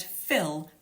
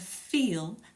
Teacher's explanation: The word fill has a short vowel and feel has a long vowel, meaning that the vowel is a longer duration when you say it. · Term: Vowel length